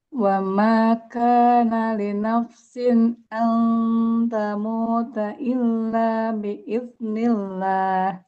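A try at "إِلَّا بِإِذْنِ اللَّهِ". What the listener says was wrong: Illa biiznillah. Dengan huruf zalnya yang lebih mengalir lagi. Illa biiznillahi kitabam muajjala.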